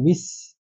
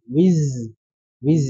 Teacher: Wiz harus ada getarannya. Kalau sin wis itu suaranya tajam, kalau wiz itu bergetar.